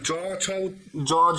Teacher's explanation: >> আর চ জ ঝ উচ্চারণ যখন করছি তখন শুরুতে সম্পূর্ণ বাধা প্রাপ্ত হচ্ছে এবং শেষের দিকে গিয়ে একটু কেমন যেন শ্বাসবায়ুটাকে ছেড়ে দিচ্ছে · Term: ঘৃষ্টধনি